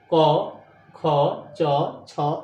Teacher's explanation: अघोष यानी घोष नहीं है तो झनकार पैदा नहीं होगी। तो जिन वर्णों के उच्चारण में स्वर तंत्रियां आपस में झनकृत नहीं होती है उसे हम कहते हैं अघोष वर्ण।